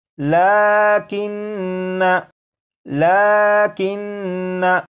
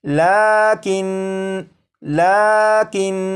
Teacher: लेकिन नून के ऊपर जो ज़बर है इस ज़बर को नहीं पढ़ेंगे